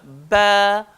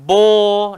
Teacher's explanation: Jadi ba melibatkan dua bibir dan bila dia keluar lembut dan lunak.